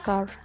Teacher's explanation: Namun bunyi dominannya adalah bunyi A. Jadi waktu mengucapkan mulutnya itu mangap dan agak membulat biar ada bunyi O-nya sedikit.